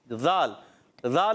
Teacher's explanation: ज़ाल की अदायगी होती है ज़बान का सिरा ऊपर के दांतों के अंदरूनी किनारों से या बैरूनी किनारों से भी इस्तेमाल कर सकते हैं।